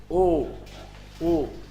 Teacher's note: ओ कंठ भी है और ओठ भी है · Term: कंठोष्ठ